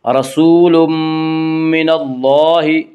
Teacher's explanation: رسول من اللہ، وا مدہ، وا مدہ وہ واو جو ساکن ہو اس سے پہلے پیش ہو، وا مدہ کو ایک الف کے برابر کھینچ کر پڑھیں گے · رسول من میں ادغام بالغنہ ہوگا